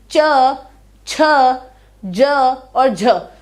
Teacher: जब हम बोलते हैं च, छ, ज और झ, तो आप देखोगे कि आपकी जो जीभ है वो तालु को टच कर रही है ना